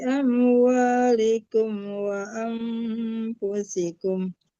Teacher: wa disamarkan ke fa antara nun dan fa wa anfusikum itu dengung